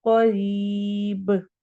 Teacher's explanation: قوف کو موٹا پڑھنا ہے، ری را کو باریک پڑھنا ہے اور یا مدہ کرنی ہے، اور آخر میں با کے اوپر قلقلہ کرنا ہے۔